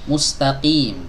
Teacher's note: huruf qaf ini keluar dari pangkal lidah bertemu dengan langit-langit yang lunak